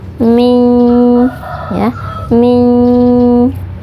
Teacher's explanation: ada nun sukun bertemu dengan salah satu huruf ikhfa yaitu sin cara membacanya kita menyamarkan huruf nun sukun kemudian mempersiapkan huruf syin ditahan dua harokat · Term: ikhfa Haqiqi